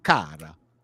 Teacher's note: She'll use karate. I'm just giving it the Hungarian treatment where you emphasize the first syllable